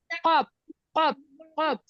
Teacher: জি জিব্বার গোড়া তার বরাবর উপরের তালুর সাথে মিলেছে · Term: কফ